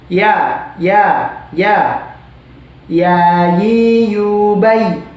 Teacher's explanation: bagian lidah tengah itu naik ke atas